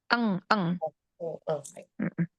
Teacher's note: nun sukun ketemu qaf, ikhfa-nya dia ab'ad yang jauh